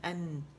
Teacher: آپ بولے ان تو آپ کو منہ کھلا ہوا ملے گا، لیکن زبان جو ہے وہ نون کے مخرج پر ہوتی ہے ہماری